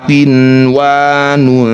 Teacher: Nun sukunnya tidak usah dengung. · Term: izhar mutlak